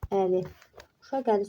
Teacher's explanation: Uşaq əli sözündə bu q-dan sonra saitdən başlayan söz gəldiyinə görə bu q, ğ şəklində tələffüz olunacaq. Yəni x şəklində tələffüz olunmadı.